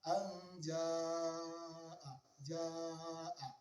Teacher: Kemudian mad selanjutnya di sini ada mad wajib muttasil. Wajib dibaca 6 harokat, yaitu mad tabi'i yang bertemu dengan hamzah di 1 kata. Contoh di sini ada pada ayat yang keempat dari kata anja'a, ja'a, mad tabi'i, kemudian setelahnya ada hamzah pada 1 kata.